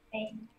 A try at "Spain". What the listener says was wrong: Say the E, Spain.